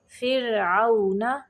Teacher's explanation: را کو قلقلہ نہیں کرنا اور موٹا بھی نہیں پڑھنا